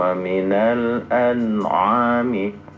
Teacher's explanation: Jadi jangan ketukar hamzah dan ainnya. Yang pertama hamzah dulu.